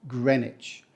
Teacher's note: not green witch not greenwick it's not about witches or Wicks it's just Greenwich the W is silent